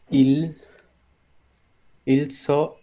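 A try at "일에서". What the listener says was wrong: না, ইল এসো এসো, হ্যাঁ ইল এসো। এখন ইলের পরে এসো আছে মানে হচ্ছে কি সর্বর্ণ আছে, তাহলে ইল আর হচ্ছে না, কারণ কি রিউলটা এসোর কাছে চলে যাচ্ছে। তাহলে ইরেসো ইরেসো সামবন।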